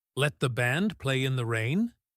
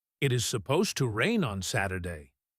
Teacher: The contrast between the fast, Let the band play in the rain and the slow, Supposed to rain on Saturday, highlights the urgency.